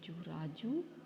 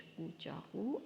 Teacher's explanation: उल्टा पेश में ऊ की आवाज़ खींच के निकलेगी, जैसे रे रा जी, वा उल्टा पेश जू राजू, जे जा, का वा उल्टा पेश कू चाकू, अलिफ मद ज़बर आ।